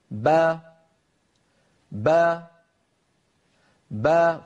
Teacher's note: فلما تبتعد الشفتان والفكان تخرج مفتوحه · بتباعد الشفتين خرجت الباء، وبتباعد الفكين انفتحت الباء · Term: الباء المتحركه